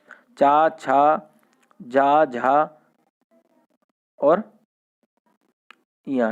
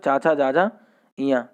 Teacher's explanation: चा वर्ग जो होता है हमारा स्पर्श संघर्षी होता है